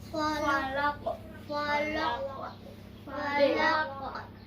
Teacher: qalqalah kubra dibaca dengan suara pantulan yang kuat